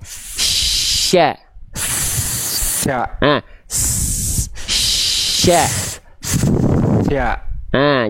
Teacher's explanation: tengah lidahnya ngangkat dari awal